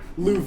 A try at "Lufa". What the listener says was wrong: Did you say Luva? Your V is a little wispy.